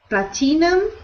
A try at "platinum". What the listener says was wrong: So we pronounce that word with no I sound. We ignore the I. We don't pronounce it. We say platinum. Platinum.